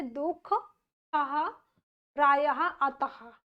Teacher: ये वह ध्वनि है जो कुछ तत्सम शब्दों में स्वर के बाद हा रूप में उच्चारित होती हैं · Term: विसर्ग ध्वनि